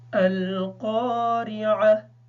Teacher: यहाँ पे क़ाफ को पुर पढ़ेंगे, रा के नीचे ज़बर होने की वजह से इसको बारीक पढ़ेंगे। आइन को अच्छी तरीके से अदा करेंगे।